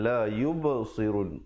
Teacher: Yub merupakan qalqalah, ada pantulan, benar?